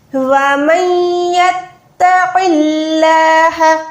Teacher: قاف موٹا ہے لیکن اللہ کا نام باریک رکھیں گے زیر کی وجہ سے